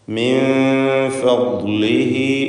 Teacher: ഇഖ്ഫാ ഹഖീഖി എന്ന നിയമമാണ്. നൂനിനെ അവ്യക്തമാക്കി മണിച്ചുകൊണ്ട് ഉച്ചരിക്കണം. ഇഖ്ഫാഇൻ്റെ 15 അക്ഷരങ്ങളിൽ ഒന്നാണ് ഫ.